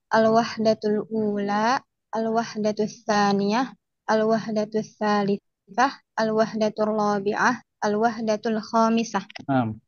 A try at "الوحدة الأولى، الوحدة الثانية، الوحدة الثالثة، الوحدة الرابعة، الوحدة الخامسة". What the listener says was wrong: Ahsanti.